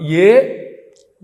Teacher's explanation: ఏ అన్నప్పుడు కంఠము తాలువు రెండు కలిపి పనిచేస్తాయి.